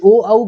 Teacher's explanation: तो यहाँ पे आपका जो सही उत्तर होगा वो होगा कंठोष्ठ, कंठ और ओष्ठ की सहायता से जो है ओ और औ का उच्चारण होता है